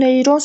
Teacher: Neyron sözündə sonuncu hecaya düşür.